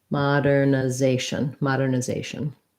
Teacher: This has secondary stress on the first syllable